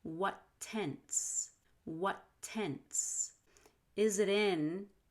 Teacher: what tense shares a t hold the first t release on the second